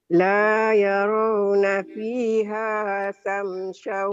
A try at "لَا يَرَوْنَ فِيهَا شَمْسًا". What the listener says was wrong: shinnya besar. Syamsau besar.